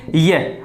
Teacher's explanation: जैसे ये को लेंगे ये, अब ये का उच्चारण करेंगे तो हम पाएंगे कि ये का उच्चारण करते समय जो जीवा है वो तालु के ऊपर स्पर्श करने की कोशिश करती है